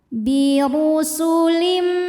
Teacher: Huruf ra dibunyikan secara tafkhim sebab ra berharokat dhammah. Cara bacanya ra dibunyikan dengan tebal.